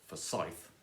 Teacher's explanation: Forsyth with stress on the second syllable · with the stress on the second syllable, so ith, then you are kind of stuck because the second line is going to have to end with the Scottish town of Forsyth because there are no other rhymes in the world.